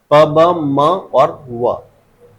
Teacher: bilabial मतलब दो होठों से मिलकर जो साउंड बनती है वो